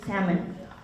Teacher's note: And the fish, salmon, there's no L sound. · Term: silent sounds